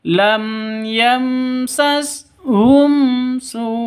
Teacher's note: Su ini panjang 5 sampai 6 ketukan. Kalau 6 ketukan dihitung dengan hurufnya.